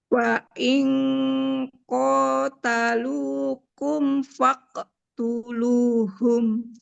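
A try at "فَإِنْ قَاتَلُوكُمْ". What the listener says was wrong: Fa'il. Nah, ikhfa-nya kan nun sukun. Bertemu huruf qaf. Huruf qaf tebal, maka bunyi ikhfa-nya dengunnya ikut tebal. Fa'il. Fa'il qatalukum faqtuluhum.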